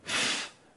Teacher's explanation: sounds which utilize the bottom lip and the top row of teeth are known as labial dental sounds